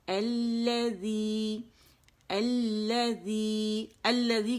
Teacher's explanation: اور وہ والا جو لام تعریف ہے وہ لام شمسی کے اندر مدغم ہو گیا، جس کی وجہ سے ہمیں یہاں 2 لام نظر آ رہے ہیں، جو ظاہری شکل ہے اس کی، ٹھیک ہے. اور لام تعریف جو ہے لام شمسی کی شکل میں پڑھا جا رہا ہے، اور یہ مشدد ہو گیا